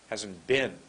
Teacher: look at my lips come together to make the be